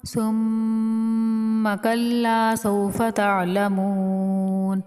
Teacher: ثم پہ میم مشدد ہونے کی وجہ سے یہاں پر ایک الف کے برابر رک کر غنہ کریں گے۔ غنہ کہتے ہیں ناک میں آواز لے جانے کو، اور ایک انگلی کو بند کرنے یا کھولنے میں جتنا ٹائم لگتا ہے ایک الف کی مقدار ہوتی ہے۔